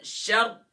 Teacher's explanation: را سے پہلے زبر ہے تو را کو فل ماؤتھ کریں گے